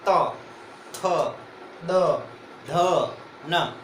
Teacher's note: यानी जीभ दांतों से स्पर्श होगी दोस्तों बोलने में। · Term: दंतीय व्यंजन